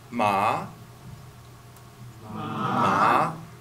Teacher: The second tone, or we call it a raising tone.